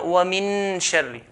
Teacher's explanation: We're not going to pronounce the noon.